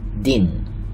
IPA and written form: din (embedded-in)